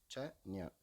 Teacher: ச ஞ இடை அன்னத்தை தொடுவதால் உண்டாகிறது